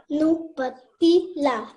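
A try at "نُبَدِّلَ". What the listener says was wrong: Nubaddila. Tashdid, you need to practice on.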